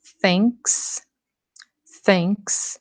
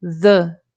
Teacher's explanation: o som surdo do TH, como em thanks, thanks, e o som sonoro, como em the